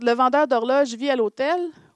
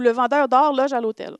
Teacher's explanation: Donc, c'est les mêmes syllabes impliquées, même production, sauf qu'on s'attend à avoir un allongement final sur « loge » dans « Le vendeur d'horloge », mais un allongement final sur « or » dans « Le vendeur d'or loge à l'hôtel »